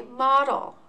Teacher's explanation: notice that the vowel sound is a little bit lazy not making a true short or long e sound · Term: schwa